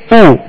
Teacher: पेश की अदायगी में होठों को कामिल गोल करेंगे जैसे ऊ, मगर हरकत में इस बात का ख्याल रखेंगे कि हरकत दराज न हो।